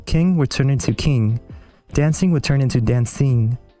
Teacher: the A and the I sound tend to become long before NG. So I becomes E and A becomes a.